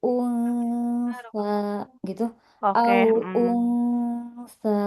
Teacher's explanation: Kalau sa ini kan dia makhraj saanya di ujung lidah ya, menempel ke ujung gigi seri atas. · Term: ikfa